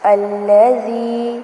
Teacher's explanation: الذي ذال کو نرمی سے پڑھنا ہے اور یہاں پر یا مدہ ہوگی، یعنی کہ زال زیر یا زی تھوڑا سا لمبا کریں گے